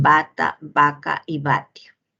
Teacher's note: tenemos aquí el oclusivo bilabial sonoro, representado por la letra B, la V y la W en bata, vaca y vatio.